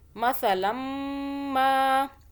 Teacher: سا کو سافٹ پڑھیں، زبان کو باہر کریں ہلکا سا، پھر یہ سا ادا ہوگا. سین کی آواز میں سا کو نہیں پڑھنا. · یہاں پہ میم مشدد آ رہا ہے، 2 سیکنڈ کا ہم نے غنہ کیا